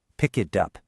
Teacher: The K and pick grabs onto it. And the T in it grabs onto up. It's no longer three separate ideas. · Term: linking